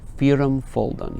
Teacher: We have alliterations on the strongs, and we have the first foot stronger than the second, but in this case that's relative. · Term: falling feet